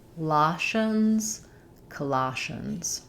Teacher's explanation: In Colossians, we have second syllable stress. Letter O says ah, like in father. That means our first letter O is unstressed.